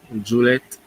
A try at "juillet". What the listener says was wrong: Juillet. Juillet. Most that this is what I hear most of the time is juillet. The T silent.